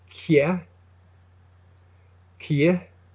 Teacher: On every slender consonant, you can stick in what you call the Y glide, what's called the Y glide, a little y sound.